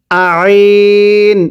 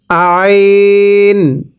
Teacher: আইনটা চাপ দিয়ে পড়বেন আইন, গলার মাঝখানে চাপ দিতে হবে